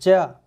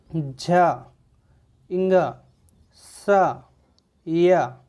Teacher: अच्छा, इसको आप बोल के भी उच्चारित करके देख सकते हैं, जैसे कि च, झ, जैसे कि आप इसको उच्चारित कर रहे हैं ज, तो आप देख रहे होंगे आपकी जबान का अगला भाग है वो ऊपर कठोर तालु को स्पर्श कर रहा है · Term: तालव्य व्यंजन